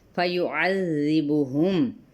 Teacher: عین کو وسط حلق سے ادا کرتے ہوئے ذال کو نرمی کے ساتھ ادا کرنا، لیکن اس کی ادائیگی میں حرکت کو یعنی زیر کی حرکت کو لمبا نہیں کریں گے۔